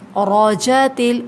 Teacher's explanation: را کے اوپر فتحہ ہے، مطلب زبر، تو جب بھی فتحہ آتا ہے، زبر آتا ہے تو اس کو موٹا پڑھتے ہیں